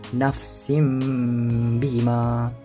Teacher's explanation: Misalnya, bila nun sakinah bertemu dengan huruf iqlab yakni ba, cara bacaannya adalah yambu'a. Bunyi nun diganti dengan mim.